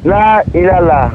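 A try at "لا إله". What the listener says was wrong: Non, pas ilala, ilaha.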